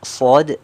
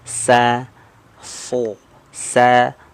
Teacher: huruf Shad dia hurufnya tebal Istia sedangkan Sin ya Sa ini dia tipis